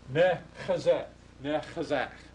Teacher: these vowels don't become a vowels, they dissimulate, and you get e vowels instead. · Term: dissimulation